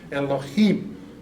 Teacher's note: the emphasis is on the im at the end, the plural. And some would say, well, no, it should be on Elohim.